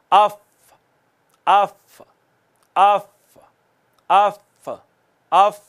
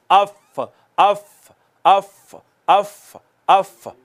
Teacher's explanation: सनाया उलिया का किनारा, ऊपर वाले 2 दांत जो हैं जब वो नीचे वाले होंठ से आके टच होते हैं दरमियानी हिस्से से, वहां से फ़ा अदा होती है। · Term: फ़ा का मखरज